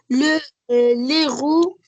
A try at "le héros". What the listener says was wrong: Le héros, hein, le héros, c'est pas l'héros. On dit le héros, hein. C'est pas l'héros. Le héros,